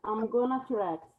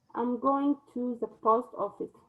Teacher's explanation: In informal conversation, going to often has the pronunciation gonna. When it comes before another verb, it has gonna when it comes before another verb.